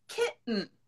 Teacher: so we dropped the t sound all together